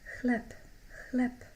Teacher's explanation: Make sure you don't pronounce b, so don't say chleb. B becomes voiceless at the end and sounds like p.